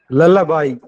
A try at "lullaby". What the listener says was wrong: Yeah, very good, very good. I appreciate that. It is lullaby.